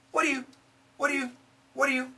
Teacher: when we say this really fast, what are you and what do you sound the same? What are you?